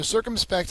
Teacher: circumspect has the first syllable accented it's an adjective it means careful or cautious so if you're